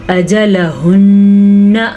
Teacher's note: اجلہن میں نے غنہ بھی ادا کیا اور ہاں کا مخرج بھی ادا کیا ہے